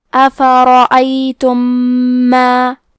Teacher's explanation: ادغام کا معنی ہے حرف کو حرف میں داخل کرنا، تو ہم میم ساکن کو دوسرے میم میں ملا کے ایک ہی میم غنہ اور تشدید کے ساتھ پڑھیں گے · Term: ادغام متماثلین صغیر